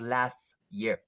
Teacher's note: here t is not pronounced in fast speech